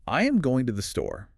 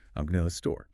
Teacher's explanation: Go and store are the two beats. They are the beats and the time between them stays the same even though we basically dropped three syllables of sound in between.